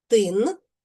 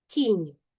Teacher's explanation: У першому слові тин обидва приголосних вимовляємо твердо, а в слові тінь обидва приголосних вимовляємо м'яко.